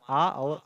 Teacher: विवृत स्वर को हम लोग बोलते हैं ओपन वायबल या निम्न स्वर, यानी लो वायबल। यानी ऐसे स्वर ध्वनि होते हैं जिनमें जीवा को मुख में जितना संभव हो सके उतना जो है नीचे और तालु से दूर रखा जाता है